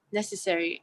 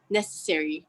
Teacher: Thus, we hear necessary as necessary in RP, but a more clearly articulated version in GA, necessary, with two strong vowels in the same word